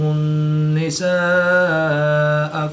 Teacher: الف مدہ کے بعد حمزہ اسی کلمے میں ہے تو یہاں پر مد متصل ہوگی، 3 سے 5 الف تک کھینچ کر پڑھیں گے